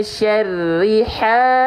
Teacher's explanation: Maka haknya harus dibaca berapa lama ya durasinya? Nah, harus kita panjangkan dengan kadar panjang 2 harokat atau 1A, 1 alif. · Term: mad tabi'i